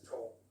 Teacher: in rp with tall you use the dark l